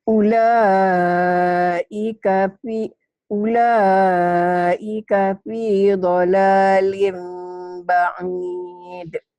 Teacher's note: Karena tanwinnya ketemu ba. Ada mim, tanwinnya berubah menjadi mim bunyinya, mim mati. Asalnya kan lin itu nun mati n.